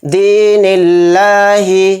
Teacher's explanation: لام کو بھی یہاں پر کھینچنا ہے کیونکہ لام کے اوپر کھڑا زبر ہے · لفظ اللہ کے لام سے پہلے زیر ہو تو لفظ اللہ کا لام باریک پڑھا جائے گا · نون کو لام میں ملا دیں گے اور لفظ اللہ کے لام کو یہاں پر باریک پڑھیں گے کیونکہ کہیں پر موٹا پڑھا جاتا ہے لفظ اللہ کا لام کہیں پر باریک پڑھا جاتا ہے.